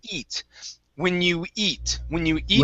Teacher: So instead of when you geet food, this is going to be only a vowel. Instead of geet, this is eat.